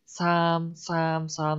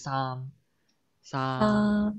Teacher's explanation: we pronounce it with less air puff · your S sound sounds very breathy